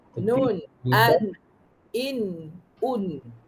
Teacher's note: Gusi hadapan ke atas, okey. In, un tu dia terus ke gusi kan. Huruf nun terus ke gusi.